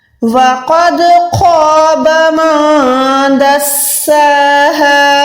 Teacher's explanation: قوف proper موٹا ہے, اس کے بعد دال ہے یعنی یہاں پر کلکلا ہم نے کیا